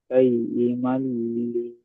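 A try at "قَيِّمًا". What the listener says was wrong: ক ক কইমা। ক কয়িমা, তুমি কাইয়িমা বলছো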